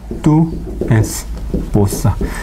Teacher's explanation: en el habla rápida ocurre que, perdón, no el encadenamiento, sino los ajustes vocálicos. Por tanto, este U se convierte semivocal. Tu esposa. Entonces, 4 sílabas se reducen en 3 sílabas.